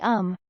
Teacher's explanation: the sound is made on the lips